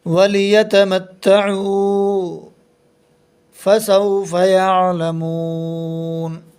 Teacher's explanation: نون کے اوپر زبر ہے، زبر کو جلدی پڑھیں، تھوڑا بھی نہ کھینچیں۔ نون پر وقف کرتے وقت نون کو ساکن پڑھیں گے · لام کے اوپر زبر ہے، زبر کو جلدی پڑھیں، تھوڑا بھی نہ کھینچیں۔ واو ساکن سے پہلے پیش ہے اس لیے حرف مدہ ہوگا، حرف مدہ کو ایک الف کے برابر کھینچ کر پڑھتے ہیں۔ نون کے اوپر زبر ہے، زبر کو جلدی پڑھیں، تھوڑا بھی نہ کھینچیں۔